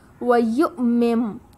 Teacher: حمزہ پر جزم ہے اور اس کنڈیشن میں ہمیں جھٹکا دے کر پڑھنا ہوتا ہے